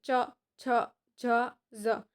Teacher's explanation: બીજું છે તાલવ્ય એટલે કે આપણી જીભ તાળવાને સ્પર્શ કરે છે જેમ કે બોલો તો ચ જ ઝ તે પછી છે મૂર્ધન્ય